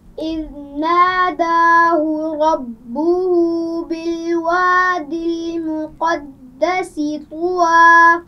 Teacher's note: سین کی آواز میں سیٹی ہوگی